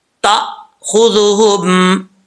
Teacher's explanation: تأخذہم ذال میں سیٹی نہیں ہوگی، نارمل پڑھا جائے گا بغیر سیٹی کے